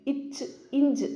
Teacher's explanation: நாவோட இடை அன்னத்தின் இடை இது ரெண்டும் சொல்லி பாருங்க இச் இஞ்ச் அப்படின்னுள்ள அது ரெண்டு தான் மோதும்.